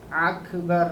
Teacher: یہ اکبر کا جو الف ہے یہ حلق میں چل جا رہا، آئین تھوڑا آدھا آئین بن جا رہا وہ